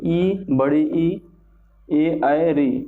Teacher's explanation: अग्र भाग से बोलते हैं, टंग के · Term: अग्र स्वर